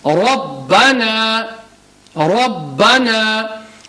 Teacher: And the ba has a tashdeed, so ba is mushaddad, so we need to emphasize